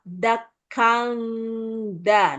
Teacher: yang pertama tanwin tapi setelahnya dal maka tanwinnya ini kan samar